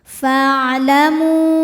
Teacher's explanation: mu hukumnya adalah mad jaiz munfasil, karena mad tabi'i bertemu hamzah di dua kata. Mad tabi'inya adalah waw sukun didahului harokat dhammah terdapat pada kata pertama yaitu fa'lamu.